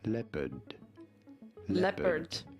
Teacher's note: You do want to stress on the first syllable.